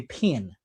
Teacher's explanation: if I say the word pen in Memphis, Tennessee or Alabama, you would say pin. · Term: Southern dialect